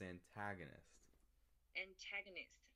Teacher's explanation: The stress is on the second syllable, so it's antagonist.